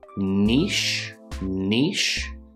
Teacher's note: we have an n sound followed by the long e